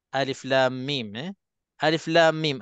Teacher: Antara lam dengan mim, lam kita baca 6 harakat. Mim pun kita baca 6 harakat.